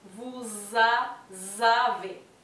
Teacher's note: Los dientes superiores toquen los labios · Lo mismo va a pasar, tenemos acá la liaison. Y la S final del vous pasa a pronunciarse como una Z porque está en contacto con la A. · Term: V corta